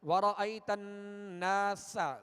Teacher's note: سین کو سختی کے ساتھ اور باریک پڑھیں گے